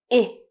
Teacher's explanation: Moving on to the sound I. Now your tongue is a little higher than for the E sound and you should stretch out your lips a little and it's a short sound. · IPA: /ɪ/